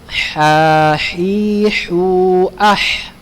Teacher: Ha ada di tenggorokan tengah. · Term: huruf ha